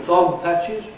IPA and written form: ˋfɒgpæʧɪz (fog patches)